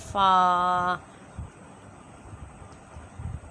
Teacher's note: جو اوپر کے دو دانت ہیں ان کو ہم ہونٹوں کے تر حصے سے، گلے حصے سے لگائیں گے اور پھر وہاں سے فا ادا کریں گے، فا۔